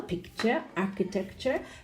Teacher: Now, group 1, all of the words have the schwa, no, picture, architecture, because none of them have the stress on the U-R-E syllable